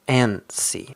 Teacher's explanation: But the stress is at the beginning